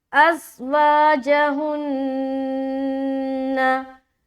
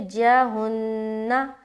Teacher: वा में एक अलिफ खींच रहे, जहुन्ना, यहाँ पर नून मुशद्दद का गुन्ना।